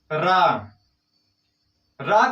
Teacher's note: हमारी जीवा एकदम से टेढ़ी हो जाती है, इसलिए इसे लुंठित वर्ण कहा जाता है